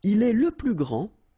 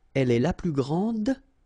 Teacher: Okay, so phonetically, what you can hear is that this first form here for the masculine, grand, so you don't pronounce the final D